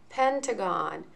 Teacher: Notice the A in the middle is the schwa sound.